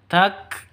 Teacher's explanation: kafnya harus ada hemisnya harus ada nafasnya keluar